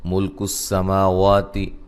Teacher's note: سین کو باریک سیٹی سے، ما وا دونوں کو ایک ایک الف کی مقدار کے برابر لمبا کریں گے